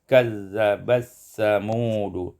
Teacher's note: Pada ayat yang keempat, kazzabat samudu, idgham ta fi sa, diidghamkan ta pada sa menjadi kazzabas samudu.